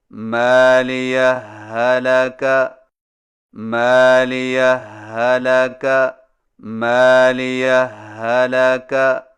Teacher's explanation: صرف ایک مشدد ہا سے پڑھیں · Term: ادغام